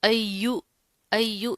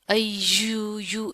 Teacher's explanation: या के ऊपर क्या है, तशदीद है, तो इसको जमा कर मजबूती से पढ़ेंगे। अय्यू, अय्यू, इसको आपने इस तरह नहीं पढ़ना, अय्यू यू, इस तरह के साउंड नहीं निकालने।